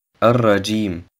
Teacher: Das Alif und das Lam im Wort Ar-Rajim werden nicht ausgesprochen. Das Ja im Wort Ar-Rajim wird 3 bis 5 Harakat verlängert. Die Lautbildung des Ja entsteht zwischen dem oberen Gaumen und dem Zungenblatt.